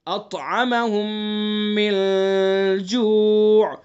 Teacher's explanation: میم کے بعد دوسرا میم ہے تو غنہ کریں گے